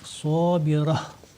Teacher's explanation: Donc c'est un ta marbuta comme on l'appelle. Et lorsqu'on s'arrête, on fait une pause. Cela se transforme en un ha. Donc on dit sabira.